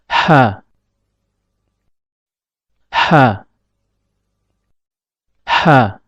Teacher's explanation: tatkala mengucapkan huruf ha, epiglotis agak sedikit mundur ke belakang.